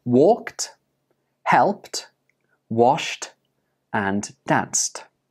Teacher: Can you hear the t at the end of these words? Again, even though these words are spelled with an ed, they are pronounced with a t sound. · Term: t ending sound